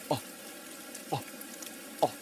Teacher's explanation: beginning a word with a glottal stop, with this h this glottle sound. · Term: glottal reinforcement